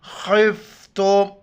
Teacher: فَإِنْ خِفْتُمْ، خوف زیر خفت، میم پیش تم، خفتم، خو گلے سے ادا کریں گے، موٹے الفاظ ہے